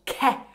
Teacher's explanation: El fonema K puede ser aspirado, pronunciándose con una aspiración entre la K y la vocal. Y las vocales E y O pueden ser abiertas después de esta consonante.